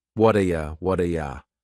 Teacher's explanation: That T at the end of the word what is going to change to a D sound. This is really typical of American English, where a T that's surrounded by vowel sounds is going to change to a D. It's called a flapped T, and it just rolls off your tongue in a smooth way.